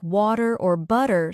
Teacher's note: the T in words like water or butter sounds more like a soft D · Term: flap T sound